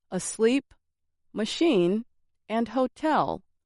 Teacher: some exceptions include asleep machine and hotel which stress the second syllable